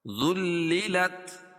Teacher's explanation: ذال کو لام میں ملائیں گے سختی کے ساتھ کیونکہ لام کے اوپر تشدید ہے، تشدید والا حرف سختی کے ساتھ پڑھا جائے گا اور 2 مرتبہ پڑھا جاتا ہے۔